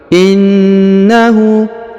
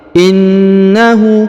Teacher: Huruf Na ditahan dan ditekan 2-3 harokat karena berharokat tasdid.